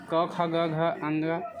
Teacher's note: इसका उच्चारण कंठ से होता है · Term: क वर्ग